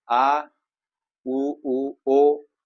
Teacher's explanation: उच्चारण कर करने में जीव का पिछला भाग काम कर रहा है उसे पश्च सर करते है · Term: पश्च स्वर